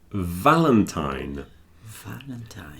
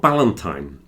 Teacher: it's like the F, but it's voiced. So you add the vibration to the F and you get V.